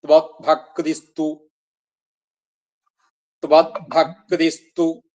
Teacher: അടുത്ത പദം തു എന്നാണ് കൂടിവരുമ്പോഴ് വിസർഗം സകാരമായിട്ട് ത്വഭക്തിസ്തു